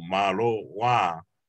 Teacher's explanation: we elongate the a on the wa, so malo wa, and there needs to be a glottal stop on the filuai.